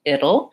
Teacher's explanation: It sounds like vowel I, flap T, and dark L, which basically has a schwa before it. So it'll, it's 2 syllables.